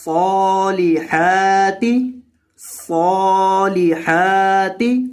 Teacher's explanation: सौद के ऊपर खड़ी ज़बर है इसलिए सौद को लंबा करना है, और हा के ऊपर भी खड़ी ज़बर है इसलिए सौद और हा दोनों को आपने एक एक अलिफ के बराबर मद करना है।